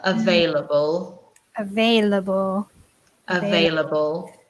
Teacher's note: we say it very quickly so it's four syllables but push them all together